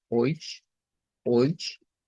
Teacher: El diptongo EU, que se convierte en oi, y luego suena la cedila como ch